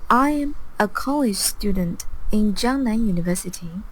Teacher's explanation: she speaks very mechanically. She pronounces every syllable with exactly the same length. That's not how people talk.